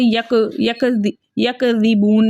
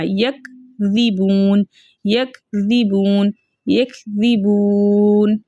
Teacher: ایک تو اس کاف کو باریک نہیں کرنا اور دوسرے اس کاف کو ہلانا نہیں ہے